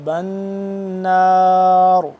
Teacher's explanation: نون یہاں پہ مشدد ہے تو اس پہ غنہ کریں گے